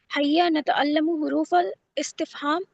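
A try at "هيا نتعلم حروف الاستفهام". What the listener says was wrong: میم پہ پیش غلط ہے جی.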